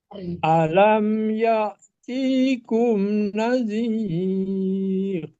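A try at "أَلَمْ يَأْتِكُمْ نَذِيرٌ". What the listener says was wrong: Masih panjang? Dipendekin, Pak. Alam ya'tikum nadhir.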